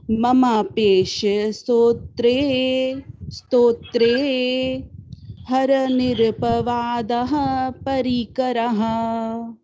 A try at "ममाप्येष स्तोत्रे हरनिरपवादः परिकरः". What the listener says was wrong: बहुत सुंदर, आपने अच्छे से तोड़ के बोला, सुंदर।